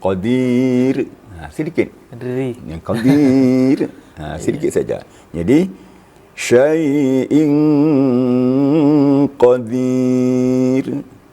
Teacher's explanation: Ra apabila di akhir dan sebelumnya ya sukun tambah lagi kasra, maka ra itu lebih tipis lagi. Lebih tipis, ganda tipisnya.